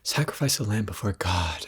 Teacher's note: why am I talking like that it's very breathy